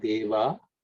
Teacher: the visarga gets dropped because of sandhi